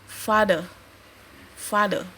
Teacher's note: The second syllable is weak and shorter than the first, less long, and has a vowel that cannot occur in strong syllable. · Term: weak syllable